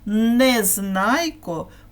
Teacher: ім'я Незнайко починається з твердого приголосного звука н